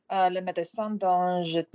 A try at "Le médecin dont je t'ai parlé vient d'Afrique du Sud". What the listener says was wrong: Médecin, soften it. Médecin, English.